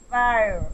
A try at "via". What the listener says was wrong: It should be the voice. There should be vibration. Via.